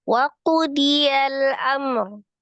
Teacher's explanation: Itu kan mim sukun ketemu dengan ro-nya kan izhar ya, tapi ditawasudkan mimnya